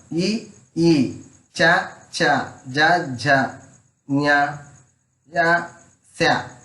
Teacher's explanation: తాలు భాగంలో పుట్టే అక్షరాలు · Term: తాలవ్యాలు